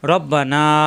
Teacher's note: রয় জবর আসলে আকার প্রকাশ পায় না, রই থাকবে, রা হবে না।